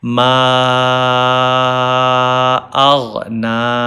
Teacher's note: Only 1 alif. Fatha tawila's length is 1 alif, and this madde munfasil length is 3 alif.